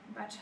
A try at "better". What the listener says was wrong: Better! Butter, mais là ce que tu es en train de dire c'est le beurre en fait.